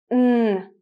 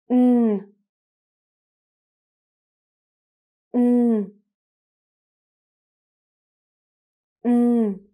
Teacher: You're going to open your mouth. Your tongue is against your top teeth, and you're going to produce a sound with your voice because it's a voiced sound. So, N. Please repeat. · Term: N sound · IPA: /n/